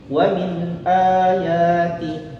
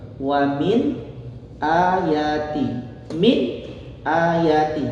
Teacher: Di sini ada nun sukun bertemu dengan huruf hamzah atau alif, maka dibacanya nun sukun tersebut dibacanya jelas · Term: izhar halqi